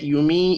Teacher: یمی یا مدہ ہے 1 الف کے برابر کھینچ کر پڑھنا ہے